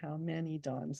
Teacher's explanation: So it's weird to have, I guess it's a sort of a caesura, how many dawns. So he's got a trochee after a slight caesura in the 3rd foot.